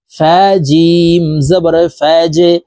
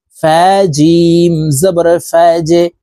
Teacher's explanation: জিম কলকলার হরফ, নিচের দিকে ধাবিত করে ধাক্কা দিয়ে উচ্চারণ করতে হবে।